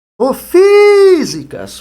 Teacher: Então você percebe que Fi é a tonicidade mais forte.